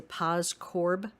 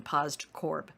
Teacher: we usually pronounce it without the d in there